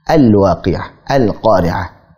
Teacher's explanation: Cara bacanya sebagaimana al-qamariyah, itu lamnya jelas. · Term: Izhar qamari